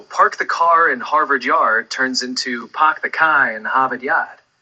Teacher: it's all about dropping those R sounds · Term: Boston accent